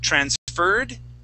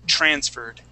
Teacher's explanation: the accent goes at the very beginning of the word